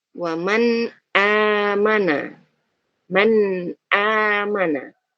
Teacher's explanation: Jadi kita baca dengan jelas bunyi nunnya, man, ya, man amana. Tentu di sana ada sifat gunnahnya, tapi sifat gunnahnya hanya satu harokat saja, yang memang melekat di huruf nunnya. · Suara nun sukun tadi ya, bunyi nun sukun, tanwinnya tadi kita baca dengan jelas. Tanpa kita dengungkan secara lebih, ya, dan tidak kita samarkan juga. Jadi benar-benar jelas. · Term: idhar